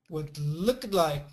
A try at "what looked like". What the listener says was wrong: yeah, don't finish it too much. And let's say it quicker. Believe it or not, that's that ED sound, okay? It's that real strong stop, okay?